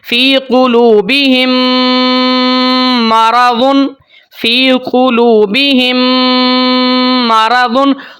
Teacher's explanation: यहाँ पर दोनों मीम को मिला के एक मीम हम पढ़ते हैं गुन्ने के साथ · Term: इदगाम शफ़वी